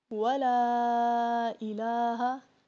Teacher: ابھی دیکھیں ولا آیا ہے، ٹھیک ہے، یہاں پہ بھی لام آیا ہے، لام کے پیچھے زبر بھی ہے، لیکن ہم اس لام کو موٹا نہیں کر سکتے کیونکہ یہ اللہ کا لام نہیں ہے، اس کو واللہ نہیں پڑھنا، ٹھیک ہے، اس کو واللہ.